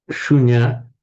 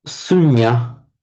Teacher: a sh in Sanskrit becomes a s in Pali